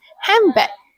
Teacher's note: In casual speech, some people change the n in hand to m when saying it quickly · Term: assimilation